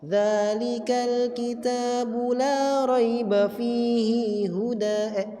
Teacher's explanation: Kalau asy-Syaikhani dia baca imalah ketika waqaf.